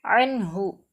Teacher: அன்ஹு, சுக்கூன் பெற்ற நூனுக்கு பிறகு யௌஹாருடைய எழுத்து ஹா வந்திருக்கு. இந்த சுக்கூன் பெற்ற நூனை நல்லா வெளிப்படுத்தி அன்ஹு மூக்கில் மறைக்காமல் உச்சரிக்கணும்